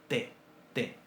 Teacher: El hebreo tiene una letra para un signo para nuestra letra T, para nuestro sonido T, T, que es una oclusiva dentoalveolar sorda. T, T.